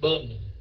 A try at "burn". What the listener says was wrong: Không phải burn. Không phải burn. Burn. Kéo dài âm O chứ. Burn. Rồi mới xuống âm E.